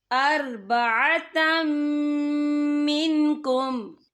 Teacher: या देखिए अर्बअतम, ता के पर तनवीन है, तनवीन के बाद जो है मीम आ रहा है, मीम जो है रूफ़े और मलून में से है, तो यहाँ पर इदगाम होगा। तो हम इसे गुन्ने के साथ पढ़ेंगे।